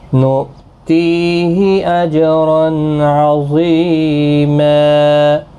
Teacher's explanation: جیم ساکن پر قلقلہ ہوگا